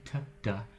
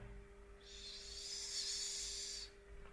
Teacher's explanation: An S is sort of like an incomplete T, where you haven't closed the sound off completely.